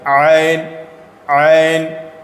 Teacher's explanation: عین بیچ حلق سے عین ادا کیجئے